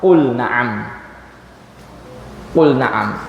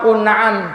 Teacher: kalau lam sukun pada fi'il ketemu Nun lamnya tetap izhar